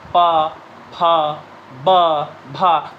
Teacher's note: आपकी जो दोनों ओठ हैं ऊपर नीचे की, एक दूसरे से टकरा रही होती हैं